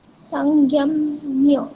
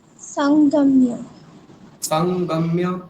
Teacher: দেখুন ওই জ্ঞ বলে ফেলছেন আপনি। জ্ঞ বলবেন না, গকার বলুন।